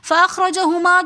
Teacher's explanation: رو کے اوپر زبر ہے تو اس لیے رو کو ہم موٹا پڑھیں گے